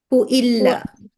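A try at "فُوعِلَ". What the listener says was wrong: ফুআইলা ফুআইলা। ফুআইলা, একটা ওয়াও আসে।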